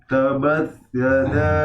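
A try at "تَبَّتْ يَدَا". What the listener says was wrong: Di awal sudah keliru ya. Baknya tasdid. Tab ya, tab bat.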